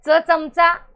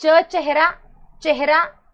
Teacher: चमचा दंत तालव्य, पण चेहरा, चेहरा तालव्य.